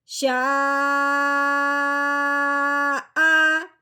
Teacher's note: اب حمزہ آنے کی وجہ سے اس مد کو ہم نے 4 الف کے برابر لمبا کرنا ہے۔ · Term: مد متصل